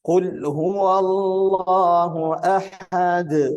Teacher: Ini tidak boleh ditahan. Qalqalah di huruf dal ini harus muncul, harus terdengar.